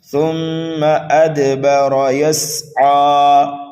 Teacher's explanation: ثُمَّ أَدْبَرَ يَسْعَىٰ، میم مشدد ہے، غنہ کرنا ہے، دال ساکن ہے، یہاں پر قلقلہ صغیرہ ہوگا، با کو جلدی پڑھیں گے، را کو پر کر کے پڑھیں گے، موٹا کر کے پڑھیں گے، یسعیٰ، سین کو سینٹی کی آواز دیں گے اور عین کو ایک الف کے برابر کھینچ کر کے پڑھیں گے، یہاں پر بھی وقف بالسکون ہوگا۔